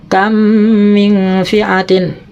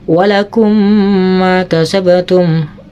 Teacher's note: idgham itu artinya memasukkan, ma'al gunnah disertai dengung, berarti dibacanya serta dengung ya. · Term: idgham ma'al gunnah